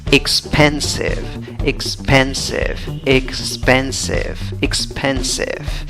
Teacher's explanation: la fuerza de voz va en la segunda sílaba de izquierda a derecha